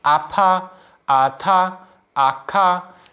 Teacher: Now, if you compare this and you do this with pertur and kur and you say apa, ata, aka, you can feel that your vocal folds sort of close off in between and they stop vibrating for a brief moment and then they kick back in